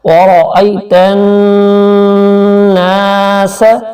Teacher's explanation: کو جب نون کے ساتھ ملائیں گے تو یہاں کچھ دیر نون کے اوپر شد ہے، کچھ دیر ناک سے آواز نکالیں گے